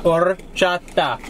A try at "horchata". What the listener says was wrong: No. You're saying or.